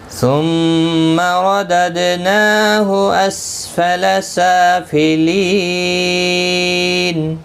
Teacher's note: وقف کی صورت میں نون ساکن پڑھا جائے گا، وقف بالاسکان ہوگا۔ ثم رددناه اسفل سافلین، 3 سے 5 الف کی مقدار کے برابر کھینچ کر وقف کریں گے۔